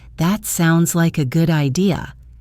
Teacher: The word that is quick and the stress is on sounds, good and idea. The rhythm is da da da da da. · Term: sentence stress